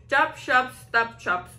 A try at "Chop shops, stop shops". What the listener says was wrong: Wala pa ang timing doon.